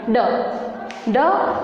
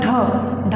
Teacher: ढ बोलने में हमें प्रेशराइज करना पड़ा और अधिक वायु बाहर आई, तो वो क्या हो गया, महाप्राण।